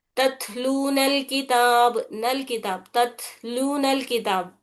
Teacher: तो वस्ल में क्या हो रहा, हम इसको कैसे पढ़ते, तत्लूनल किताब, नल किताब, तत्लूनल किताब, नून लाम को नून से मिलाकर पढ़ लेते हम, बीच में ये जो अलिफ जैसी लाइन दिख रही है इसे गिरा देते। तो वस्ल में वो हमजा नहीं पढ़ा जा रहा, यानी उसको गिरा दिए हम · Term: वस्ल की हालत